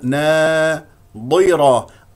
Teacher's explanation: هذه ضاد مكسوره مفخمه مرتبه خامسه